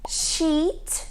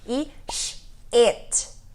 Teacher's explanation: bem longo, bem espaçado, bem comprido, bem som de I mesmo.